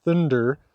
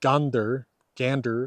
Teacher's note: there's a tendency for n and R in contact to kind of excrete a d between them